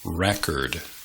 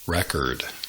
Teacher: you pronounce the noun by emphasizing the first syllable. You pronounce the verb by emphasizing the second syllable.